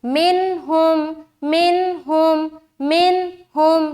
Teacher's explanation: तो जाहिर करने का मतलब यह है कि सिर्फ जाहिर करके निकल जाना है, यहाँ पर बिल्कुल देर नहीं करनी और नाक में आवाज रोकना, छुपाना, ये सारा काम नहीं करना, बिल्कुल जल्द निकलना है। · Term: इजहार